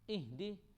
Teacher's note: یہ جو ہا ہے اس کو ہم سینے سے پڑھیں گے